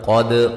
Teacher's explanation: قد قاف کو موٹا دال پہ قلقلہ